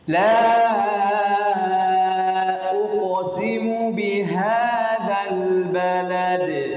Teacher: Pantulan qalqalahnya itu kita baca dengan tipis.